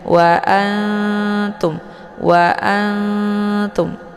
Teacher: Ang itu lebih ke dengengung Nah karena ini adalah Ikfa Akra dia lebih ke samar maka dibacanya nunnya seperti bacaan yang digantungkan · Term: Ikhfa